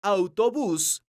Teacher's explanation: la palabra autobús es una palabra aguda porque su sílaba tónica es la sílaba bus esta palabra termina con la consonante s entonces tiene una ortográfico